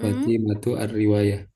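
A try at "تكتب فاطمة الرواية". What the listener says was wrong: Masya Allah bagus. Taktubu Fatimatu ar-riwayata.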